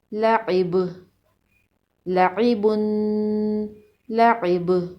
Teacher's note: لام زبر لا، عین زیر عی، لعی، با دو پیش بن، لعیبن، وقف لعب، لعبن، لعب۔ وقف کی صورت میں با پر قلقلہ ہوگا۔ با حروف قلقلہ میں سے ہے۔